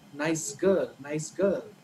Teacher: But in the connected speech, right, when you say it together, the s becomes z. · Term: Assimilation